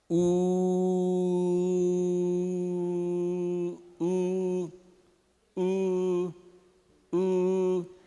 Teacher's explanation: Mas, por exemplo, esse aqui vai ser igualzinho o U, a língua vai estar lá atrás, na região posterior, ele vai estar lá no alto, perto do céu da boca, vai ser um som oral também, só que esse aqui vai ser com os lábios esticados. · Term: não arredondados